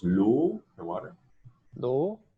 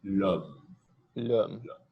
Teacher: With the higher jaw position, O, and then more open, l'homme.